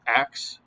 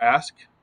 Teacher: Metathesis is like if you say ax for ask, you switch around two sounds